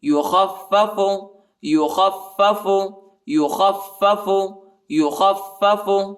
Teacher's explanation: بالآخرہ، بالآخرہ، فلا یخفف، فلا یخفف، خا کو پہلے والے فا سے ملائیں گے، ٹھیک ہے، اور فا کو سختی کے ساتھ شدت کے ساتھ پڑھیں گے